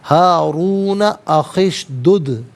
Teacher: دال ساکن ہے لیکن حرف قلقلہ ہے تو آواز لوٹتی ہوئی محسوس ہونی چاہیے